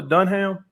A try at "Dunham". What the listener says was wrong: no it's dunham the h is silent